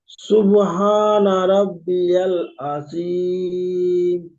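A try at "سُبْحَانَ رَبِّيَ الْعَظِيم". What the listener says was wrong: আজিম হয়ে যাচ্ছে, আজিম। আজিমটা একটু মস করবেন, হয়ে যাবে।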